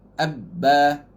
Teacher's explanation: Ba ni sifat dia jahar, tak ada angin. Tak keluar angin sebab kita tutup.